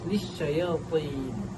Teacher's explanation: menyebut huruf ta secara tebal dengan tekanan yang jelas daripada hujung lidah ke gusi atas dalam lafaz lisyayatin. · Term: tafkhim tebal